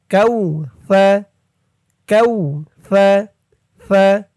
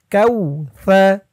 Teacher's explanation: জিহ্বার মাথা উপরের দাঁতের মাথার সাথে লাগবে সার উচ্চারণটা করার সময়